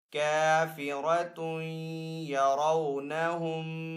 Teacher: تنوین کے بعد یا حروف یرملون میں سے تو یہاں پہ ادغام والا غنہ ہوگا